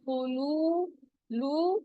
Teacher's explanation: واو ساکن ہے، اس سے پہلے پیش آ رہا ہے، واو مدہ ہو رہا ہے، 2 کاؤنٹ اسٹریچ کریں گے